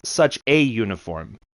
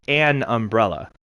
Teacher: Because uniform is pronounced phonetically with a Y.